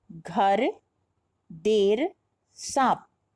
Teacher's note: इनमें अंत के स्वर वर्णों का उच्चारण हम नहीं कर रहे हैं।